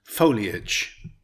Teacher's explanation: Foliage, it's a noun with three syllables. Stress the first syllable.